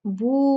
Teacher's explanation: مد جو ہے یہ 4 کاؤنٹ کھینچے گی، اس لیے کہ اس کے بعد حمزہ ہے۔ بو مد بنی، اس کے بعد اگلا جو حرف ہے وہ حمزہ ہے، تو یہ جو ہے ہم پھر اس کو 2 کاؤنٹ نہیں کھینچتے، پھر ہم اس کو 4 کاؤنٹ کھینچتے ہیں۔